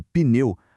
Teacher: dá para ouvir de forma super nítida tanto o som do P quanto do N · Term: encontro consonantal inicial